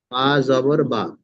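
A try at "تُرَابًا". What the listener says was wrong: বা দু জাবার, দেখেন দুটো জাবার রয়েছে, বা দু জাবার বা হয় না, বা দু জাবার বান।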